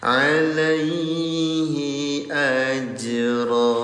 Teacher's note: Kita bahas lagi hukum tajwidnya ya. Ada huruf huruf jim, kondisinya sukun, namanya qalqalah. Cara bacanya gimana? Pantulkan.